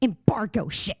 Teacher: it like goes like low and kind of guttural when she's being mean